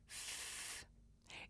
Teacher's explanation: when I make a voiceless sound like f it's just air coming through my mouth